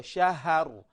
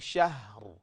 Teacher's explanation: alitia fatha hii ha badala ya kuwa na sukun